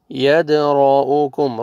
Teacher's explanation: را کو موٹا کریں گے، را کو زبر ہے